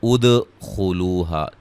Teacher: دال پہ قلقلہ ہے، خا کو موٹا ادا کریں گے